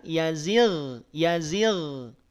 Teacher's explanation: kasrah maka ketebalannya berkurang itu yang kita namai dengan tafkhim nisbi dia tetap termasuk di antara huruf yang tebal Namun karena dia ada pengaruh dari kasrah maka ketebalannya berkurang · Karena sebelumnya dia didahului oleh kasrah. Ghain, ya, ghain dan kha saat dia kasrah atau sebelumnya kasrah, maka tebalnya berkurang. Atau istilah para ulama itu mengistilahkan dengan tafkhim nisbi.